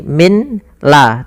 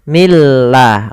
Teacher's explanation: Milla nun mati bertemu dengan lam sebagaimana tanwin bertemu lam yaitu suara nunnya langsung masuk ke lam dan hilang maka bukan lagi Min la tapi Milla langsung milladun kemudian nun